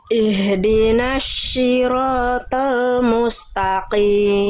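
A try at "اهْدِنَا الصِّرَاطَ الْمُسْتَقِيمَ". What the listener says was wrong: jangan syi tapi si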